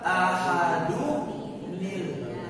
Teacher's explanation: Nun tanwinnya yang asalnya sukun dibaca kasor.